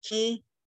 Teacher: the end is nasalized